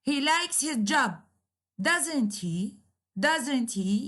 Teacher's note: the intonation is falling so instead of going up it is going down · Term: falling intonation